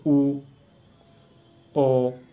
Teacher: तो व्रतमुखी यानी देखो ये जिसका अपोजिट हो गया है, यानी इसमें होठ गोल वृत्ताकार खुलते हो